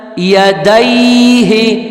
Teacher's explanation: چشمی ہا ہے، سینے کی زور سے نکلے گا